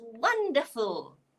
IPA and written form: ˈwʌndəfl (Wonderful)